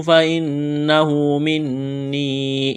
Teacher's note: نون مشدد ہے، غنہ کریں گے، آواز ناک میں چھپائیں گے۔